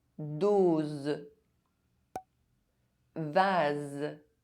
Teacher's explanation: S between two vowels is pronounced [z]